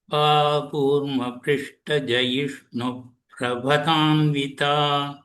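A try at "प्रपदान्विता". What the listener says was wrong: Just that pa you need to focus a little bit.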